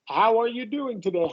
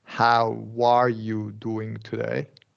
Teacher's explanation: You're emphasizing that W into the next word